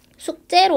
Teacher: 숙제는 발음을 숙제로 하죠. 이때 숙제가 되는 이유는 앞에 있는 받침 기역 때문에 뒤에 있는 지읒이 쌍지읒이 됐습니다. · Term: 된소리